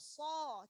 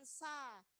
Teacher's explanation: Fa, so huruf tebal. Jadi bunyinya harus o, so. Jangan sa. So, tebalkan.